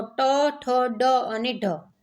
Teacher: તો ડ અને ઢ છે એ ઘોષ છે, ટ અને ઠ છે એ અઘોષ છે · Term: મૂર્ધન્ય